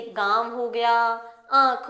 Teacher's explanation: इनका उच्चारण मुंह और नाक दोनों की सहायता से किया जाता है। नाक और मुंह दोनों की सहायता से इनका उच्चारण किया जाता है। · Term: अनुनासिक